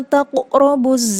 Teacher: Taqrabu, ini adalah qalqalah sugro, karena qaf itu salah satu huruf qalqalah dan dia sukun berada di tengah berarti sugro. Kalau di akhir kalimat ya berarti dia kubro.